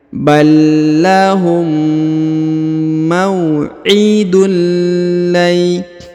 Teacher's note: Kemudian huruf tanwin yang ini bertemu dengan lam bertasdid, maka dia melebur ke sini dan ditahan serta ditekannya. Melebur ke huruf lam, ditahan dan ditekan. Tanwinnya menjadi hilang ya.